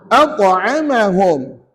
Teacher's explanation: huruf ta tidak ada sifat hams. Dia adalah huruf yang bersifat jahar. Jahar ni tertahan udara. Maka tuan-tuan tak boleh bunyi at'amahum. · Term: qalqalah